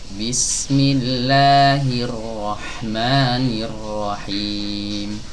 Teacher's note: Jadi terkadang ada yang membaca basmalah itu begini, Bismillahirrahmanirrahim. Kurang tepat ya, kurang tepat. Kenapa? Karena matnya bablas. Yang benar dua harokat, Bismillahirrahmanirrahim, bukan Bismillahirrahmanirrahim.